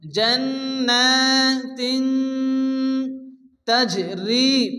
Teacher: জিম সাকিন কলকার ওখানে হালকা ধাক্কা দিয়ে পড়তে হবে। রি মাদ্দাম এগলিব টেনে পড়তে হবে।